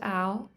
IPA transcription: ɑʊ